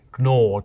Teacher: they would pronounce the G at the start of nor.